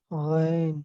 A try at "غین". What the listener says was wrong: نہیں، قاف کی آواز نکل آئی یہاں پہ، قین. غین نہیں ہے، فارسی میں لکھا جاتا ہے غین لیکن پڑھا غین نہیں جاتا.